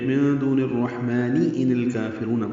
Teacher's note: ملانے کی صورت میں من دون الرحمن ان الکافرون پڑھنا ہوگا، یعنی میم کو 2 حرکات لمبا کریں گے اور نون کی زیر کو معروف طریقے سے جلدی ادا کریں گے۔ ان اور الکافرون ملا دیں گے، ان الکافرون، لام ساکن پہ اظہار قمری ہے، کاف باریک ہے، 2 حرکات لمبا کرنا ہے، را پر ہے، رو واو مدہ ہے۔